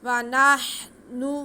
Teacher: वाव पे ज़बर, नून पे भी ज़बर और हा साकिन, नून को हा के साथ मिला लेंगे। आगे फिर नून पे पेश है।